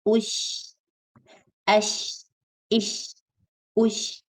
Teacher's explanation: Ush. Okay, sheen has the quality of tafashi, the sound like a spray kind of sound, spreads in the mouth.